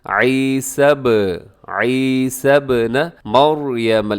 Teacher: را موٹی پڑی جائے گی کیونکہ را ساکن ہے اور اس سے پہلے والے حرف کے اوپر زبر ہے